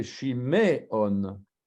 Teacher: Le Sheva, là, il est voisé, parce que c'est Shiméon.